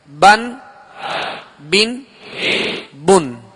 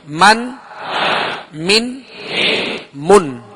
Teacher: با کا جو مخرج ہے وہ دونوں ہونٹوں کے تر حصے سے, اور میم کا جو مخرج ہے وہ دونوں ہونٹوں کے خشک حصے سے ادا ہوتا ہے, یعنی بالکل قریب قریب ہیں اور دونوں کا تعلق ہونٹوں سے ہے.